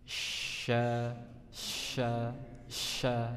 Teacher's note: ujung lidahnya menempel ke tengah-tengah gigi seri bagian bawah ya, sementara tengah lidahnya mendekat ke langit-langit. Sya, sya, sya ya, jangan sampai berubah menjadi huruf sa ya, sa bukan sa tapi sya ya, ujung lidahnya ke bawah, tengah lidah mendekat ke langit-langit.